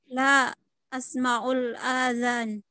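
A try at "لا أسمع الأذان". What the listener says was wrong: Ini tidak ada komanya ya, langsung nyambung bacanya.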